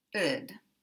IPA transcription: əd